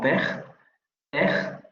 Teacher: Bilabial, oclusiva sorda, lo vamos a encontrar en palabras como pej